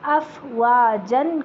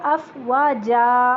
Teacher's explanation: جب اس کو وقف کیا جاتا ہے تو اسے 1 زبر الف بنا کے وقف کیا جاتا ہے ، جیسے افواجن کو افواجا، اس طرح